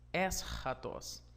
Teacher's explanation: nós temos então a sua sílaba tônica na antepenúltima sílaba